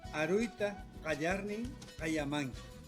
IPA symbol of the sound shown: ʎ